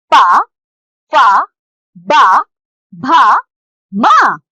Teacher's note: होठों से बोले जाने के कारण इन्ह ओष वर्ण कहते हैं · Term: ओष्ठय वर्ण